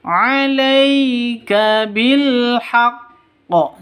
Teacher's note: 'Alaika. Alai sifat lin lentur lemes, tidak boleh disentak, tidak boleh didengungkan.